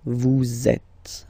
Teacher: So in that case, vous is ending with S, and then you tend to make a little link between them. So vous êtes. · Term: liaison